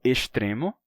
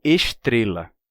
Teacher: eu pronuncio S antes de T e D com chiado